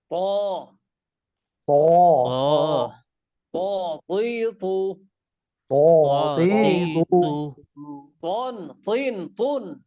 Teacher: জিহ্বার আগা সামনের উপরের দুই দাঁতের গোড়ার সঙ্গে লাগাইয়া।